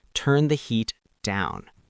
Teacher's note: when we give a kitchen command, our voice starts high and drops at the end.